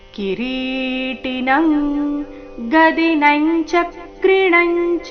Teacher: ಸಮಂತಾ ದೀಪ್ತಾನಲಾರ್ಕದ್ಯುತಿಮಪ್ರಮೇಯಂ ಕಿರೀ ಕಿರೀಟಿನಂಗದಿನಂಚ ಕ್ರಿಣಂಚ ಕಿರೀಟಿನಂ ಕಿರೀಟಿ ರಿ ದೀರ್ಘ ಟಿ ರಸ್ವ ಕಿರೀಟಿನ ಆದ ನಂತರ ಬಂದಿರುವ ಅನುಸ್ವರದ ಉಚ್ಚಾರಣೆ ಕ ವರ್ಗದ ಅನುನಾಸಿಕ